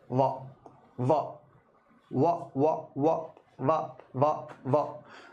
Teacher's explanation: यानी वह दांत और ओठ दोनों की सहायता से बोला जाता है। व व दांत और ओष्ठ दोनों की सहायता से बोला जाएगा। · लेकिन विद्वान ये कहते हैं कि वकारस वा का जो उच्चारण है प्रिय विद्यार्थियों, वह दोनों ध्वनियों के मेल से होता है, यानी वह दांत और ओठ दोनों की सहायता से बोला जाता है। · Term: दंतोष्ठ